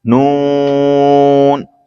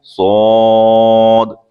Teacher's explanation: नून जबान का किनारा दांतों की जड़ की तालु की जानिब से अदा होता है, और सौद हमारा जबान की नोक और दोनों दांतों के अंदरूनी किनारे से अदा होता है